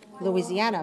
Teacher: 5 syllables. And the stress is on the fourth.